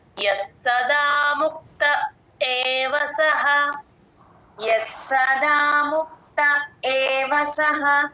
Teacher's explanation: స కింద స వత్తు ఉంది కాబట్టి ఎస్ ఎస్ అని తీసుకోండి కొంచెం డ్రాగ్ చేస్తే ఆ స కింద స వత్తు క్లియర్ గా వినిపిస్తుంది.